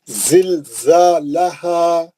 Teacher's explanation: دو چشمی ہاں ہے جو سینے کی ہوا سے نکلتا ہے. اس کو بہت محنت کرنے کی، مشقت اٹھانے کی ضرورت نہیں ہے، یہ ایفرٹلیس نکلیں گا انہیں.